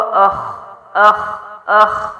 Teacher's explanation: خا موٹا ہے، آ باریک ہے